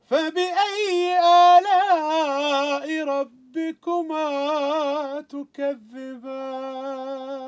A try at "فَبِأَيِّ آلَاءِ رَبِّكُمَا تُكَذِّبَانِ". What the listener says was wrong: بدون المد هذا.